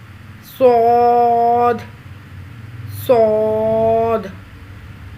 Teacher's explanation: یعنی سین جیسی ادائیگی ہوگی لیکن زبان کے پچھلے حصے کو تالو کی طرف بلند کریں گے تو یہ آواز موٹی ہو جائے گی. اب سیٹی جیسی آواز بھی اور موٹی بھی ہو، اس کو پر کر کے ادا کریں گے.